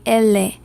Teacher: so that tongue is right under my front teeth